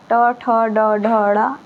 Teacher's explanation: आपका जीभ ऐसे बोलते वक्त मुड़ जाएगा, तो मूर्धा से निकलता है, इसको मूर्धा व्यंजन कहते हैं।